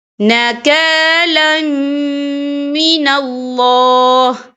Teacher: یہاں اللہ کا نام پر پڑھا جائے گا کیونکہ اللہ کے نام سے پہلے زبر ہے